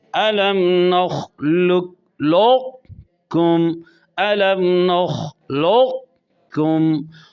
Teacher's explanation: قوف کی صفت استعلا موٹا ہونا، اس کا باقی رکھ کر کاف میں ادغام کیا جائے گا، تو لہذا یہ ادغام متقاربین ناقص ہوا کہ قوف کی کوئی نہ کوئی صفت باقی ہے۔